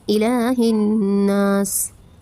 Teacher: الہ لام پر کھڑا زبر ہے ایک الف کے برابر کھینچیں گے